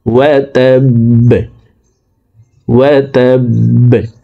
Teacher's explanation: আবি লাহাবিউ, ওয়াও জবর ওয়া, তাবা জবর তাব, ওয়া তাব, বা জবর বা, ওয়া তাব্বা। বা কলকলার হরফ নিচের দিকে ধাবিত করে বাকে সাকিন করে ফেলব।